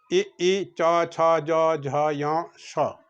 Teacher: तालव्य है जिसका उच्चारण तालु से होता है